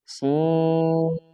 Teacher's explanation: غلط، اس کو کھینچنا ہے، مد ہے، مد لازم ہے، اور نون میں قلقلہ نہیں، یعنی آواز دوبارہ پیدا نہیں کرنی · سیٹی کا ہونا ضروری ہے، فا میں سیٹی بالکل نہیں ہے، سین میں سیٹی تیز ہے